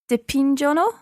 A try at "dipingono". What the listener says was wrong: So we're using that same pattern that happened with leggere, where the first person and the sixth person, the third person plural, have a hard sound, the hard G sound. So it's not dipingono, but